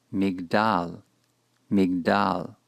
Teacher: Since the chirik is short, the ensuing shava will be silent.